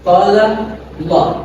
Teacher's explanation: Qala Allah, itu dibaca tebal. Huruf lam jalalahnya dibaca tebal, karena sebelumnya didahului dengan fathah.